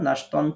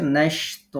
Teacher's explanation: এই যে দুই জবরকে এক জবর বানালাম, এক আলিফ টেনে পড়লাম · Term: মাদ্দে ইওয়াজ